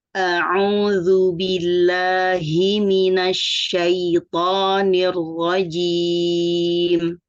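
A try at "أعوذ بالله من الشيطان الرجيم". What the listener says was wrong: Nah, ini tadi agak panjang harokatnya. A'udzu billahi langsung. A'udzu billahi. Tadi hi-nya terlalu lambat. billahi langsung.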